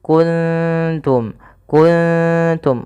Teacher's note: Kalau di sini ketemu ta, maka samarkan ikhfanya atau nunnya samarkan ke ta